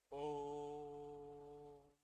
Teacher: यानी कि ओ का त्रि मात्रिक हो चुका है ओ को बहुत लंबा ले तीन मात्रा तीन मात्रा से अधिक समय ल लगा दिया तो · ओ को बहुत लंबा लिया, तीन मात्रा से अधिक समय लगा दिया, तो ओ क्या हो चुका है, त्रिमात्रिक हो चुका है।